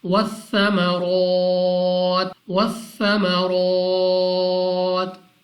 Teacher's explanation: را کو موٹا پڑھنا ہے، منہ اور آواز کو کھول کر، دوسرا 2 سیکنڈ تک کھینچ کر پڑھنا ہے، اور تا کو وقف میں ساکن کر دینا ہے۔